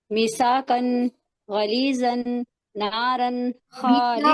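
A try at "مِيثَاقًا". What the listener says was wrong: میثاقن نہیں، میثاقن نہیں، درمیان میں یا مدہ ہے، میثاقن.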